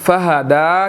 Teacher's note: دال کے اوپر کھڑی زبر ہے، اس کو ہم نے 1 to 2 سیکنڈز کھینچ کر پڑھنا ہے